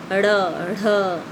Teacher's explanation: हाँ, फिर है उच्छिप्त व्यंजन, जिसमें ड और ढ के विस्तारित रूप ड़ और ढ़ हैं। इनके उच्चारण में जीभ मूर्धा का स्पर्श करके तुरंत नीचे गिरती है, जैसे ड़, ढ, तो नीचे आती है।